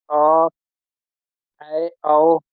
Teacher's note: इसके उच्चारण मुख द्वार आधा खुलता है